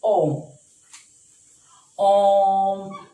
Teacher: हमने ओम, ओ को बहुत लंबा खींचा है, बहुत लंबे समय तक हम उसको लेके गए हैं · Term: प्लुत स्वर